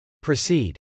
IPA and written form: prəsˈid (proceed)